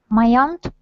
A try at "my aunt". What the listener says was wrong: Excellent, very good.